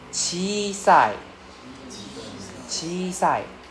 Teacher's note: We drag out the I sound in the middle.